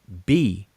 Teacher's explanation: the sound that the letter represents is a voiced bilabial plosive